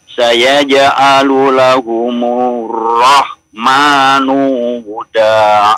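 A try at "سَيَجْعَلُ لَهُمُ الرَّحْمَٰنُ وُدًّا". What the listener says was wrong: Tasdidnya. Saya ja'alu lahumur rahmanu wudda.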